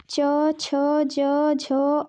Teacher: च, छ, ज, झ, य, स तालु से निकलता है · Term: तालव्य